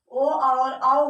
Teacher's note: ये ओष्ठ प्लस कंठ से बोले जाते हैं।